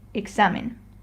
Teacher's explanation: we have to stress the next to last syllable which in this case is the x and a.